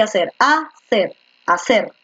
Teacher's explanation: La fuerza de voz está en la última. Hacer es una aguda.